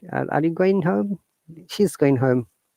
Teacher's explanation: we do not pronounce g at the end so it's not going rather it's going are you going home · in connected speech rules, we do not pronounce G at the end.